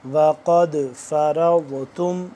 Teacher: وقد، قاف موٹا دال بھی موٹا، لیکن اور دال کے اوپر پلس آگے سے قلقلہ بھی ہے، کیونکہ دال حروف قلقلہ میں سے ہے تو اس پہ ہم قلقلہ کریں گے کیونکہ دال ساکن ہے